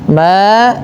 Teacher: Pada lafal ma, panjangkan dulu 2 harakat karena terdapat bacaan mad tabi'i, yaitu ditandai dengan adanya huruf ma yang berharakat fathah bertemu dengan huruf mad yaitu alif.